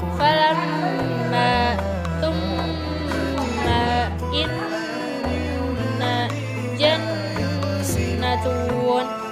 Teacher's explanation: Gunnah asliyah adalah gunnah yang asli, yaitu ketika huruf mim dan nun kedua-duanya dalam keadaan bertasydid, maka dalam mengucapkannya diwajibkan memakai gunnah, suara dengung yang nyata dan jelas dari pangkal hidung, seraya ditahan kira-kira ukuran 2 harokat atau 2 ketukan. Contoh seperti lafaz falamma thumma inna jannatun.